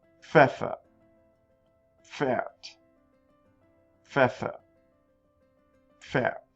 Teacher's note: The P followed by the F sound. You got to pronounce both of them. It's like you're exploding the F sound out of your lips.